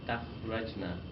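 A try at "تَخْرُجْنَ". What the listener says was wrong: Takhrujna. ra has this dhamma because it's bab nasara.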